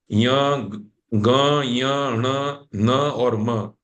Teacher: भी नहीं बोला जाएगा नाक दबाए तो भी नहीं बोला जाएगा मुख और नासिका दोनों की मदद से यह वर्ण बोले जाते हैं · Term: अनुनासिक